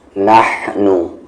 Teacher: یہ والا جو ہا ہے اس کا مخرج جو ہے، مخرج یعنی کہ ایگزٹ نکلنے کی جگہ، اس کا جو مخرج ہے وہ بیچ والا حلق ہے